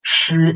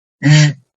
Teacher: So 诗 is like voiceless, and 日 is voiced.